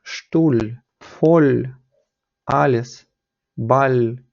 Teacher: коли вона в кінці стоїть То частіше вона звучить як Ель тобто така з м'ягким знаком